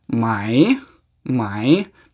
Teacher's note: what I'm focusing on here is that it's a rising tone